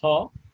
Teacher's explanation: And glottis ha, and we can see that yeah, ha, yeah, producing by restricting the airflow through the open glottals like ha, or by stopping here by completely glottis or glottal stop.